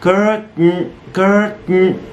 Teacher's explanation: باختصار held t اللسان بيروح في المكان المخصص لنطق التاء بس بيقف مش بيكمل. فبنقول curtain كده.